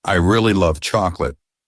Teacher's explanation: in I really love chocolate, the word really is stressed. If you miss the stress, the sentence sounds flat and you may misunderstand the meaning.